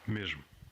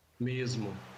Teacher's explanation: Before a voiced consonant, in European Portuguese it's j. In Brazilian Portuguese it's z in most accents.